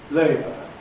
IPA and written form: ˈleɪbə (labo(u)r)